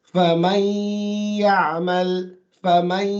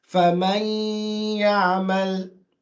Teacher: there is some noon present, but the ya dominates over it. So you can hear a ya more. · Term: partial merge